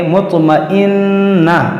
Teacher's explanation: ہے، اور یہاں پر دیکھیں طا میں قلقلہ ہوگا، مطمئنہ، یہاں وقف کریں گے تو اس تا گول تا کو ہا ساکنہ بنا دیں گے ، مطمئنہ، لیکن اگر ملا کر پڑھیں گے تو یہ حمزہ